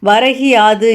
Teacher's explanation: முதல் சொல்லின் இறுதியில் உள்ள கு என்னும் எழுத்து கீ என்று வந்து ஒலிக்கிறது. இவ்வாறு முழுமையாக ஒரு மாத்திரை அளவில் ஒலிக்காமல் அரை மாத்திரை அளவாக குறைந்து ஒலிக்குது.